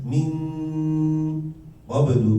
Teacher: Min qablu itu karena qaf jauh, maka nunnya juga harus lebih jelas. Jadi min, nah, beda dengan min, kan beda.